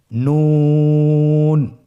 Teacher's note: নুন হরফটি উচ্চারণের ক্ষেত্রে অবশ্যই পাতলা করে উচ্চারণ করতে হবে এবং 3 আলিফ টেনে পড়তে হবে।